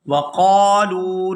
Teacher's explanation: وَقَالُوا لَن يَدْخُلَ الْجَنَّةَ وَقَالُوا، یہاں قاف کو الف مدہ کی وجہ سے کھینچ کر ادا کیا جائے گا اور لام کو واو ساکن کے ساتھ ملاتے ہوئے کھینچ کر ادا کریں گے کیونکہ یہ واو مدہ ہے